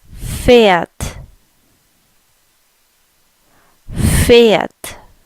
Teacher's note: if you notice the E has a little bit more of an A sound.